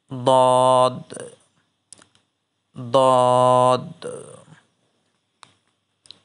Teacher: জিহ্বার গোড়ার কিনারা উপরের মাড়ির দাঁতের গোড়ার সঙ্গে লাগাইয়া